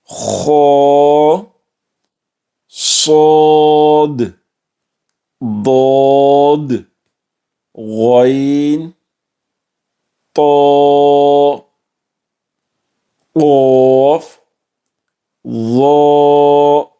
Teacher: مستعلیہ letters جو کہ پر پڑھے جائیں گے، موٹے پڑھے جائیں گے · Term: حروف مستعلیہ